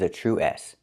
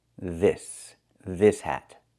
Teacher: the s is a true s no voice